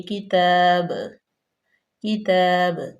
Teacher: تتلون الکتاب، واو مدہ، نل کتاب، اب یہاں پہ تو وقف مطلق کی علامت آ گئی تو یہاں پہ لازمن ہم ٹھہریں گے اور با جو ہے وہ ساکن کر دیں گے اور با جو ہے وہ پھر کلکلا ہو جائے گا، اس کو ہلا کے پڑھیں گے۔